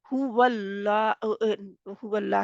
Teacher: हुवल्लाह में अल्लाह के नाम से पहले जबर थी वाव के ऊपर, इस वजह से अल्लाह का नाम मोटा हो गया, लाम मोटा हो गया।